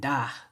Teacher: And da has that glottal stop at the end